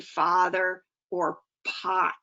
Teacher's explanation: As the tongue drops and the mouth opens, the sounds are represented from top left to bottom middle of the chart. The most open mid-position sound is ah, as in father or pot.